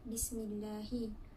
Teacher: Pada perkataan Bismillah berlaku hukum tarqiq di mana kalimah Allah didahului dengan huruf hijaiyah yang berbaris bawah iaitu mim. Cara bacaannya adalah nipis.